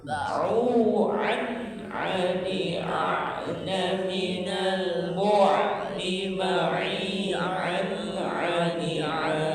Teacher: Huruf ain huruf qalqalah, orang menyebutnya huruf halqi, huruf yang keluar dari tenggorokan. Suaranya seperti A disertai tekanan A, bagian tengah tenggorokan, pangkal katup A, ba'u'an ani a'na minal mu'ni ma'i an ani a.